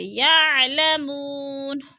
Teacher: یعلمون، وہ مدہ وہ ساکن سے پہلے میم کے اوپر پیش ہے تو وہ مدہ کو بھی ہم نے ایک الف دو حرکات کے برابر کھینچ کر پڑھنا ہے